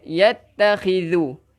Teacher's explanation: zal huruf hujung lidah kena keluarkan sikit